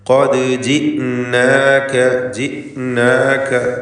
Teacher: ഇസ്തിഅലാൻ്റെ ഹർഫാണ്. ദാലിന് ഖൽഖല സുഗ്റ നൽകി ശബ്ദം ഹറക്കത്ത് പോലെ ചലിപ്പിക്കുക